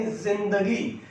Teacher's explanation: जिंदगी ज में हल्का सा, हल्की सी झनकार है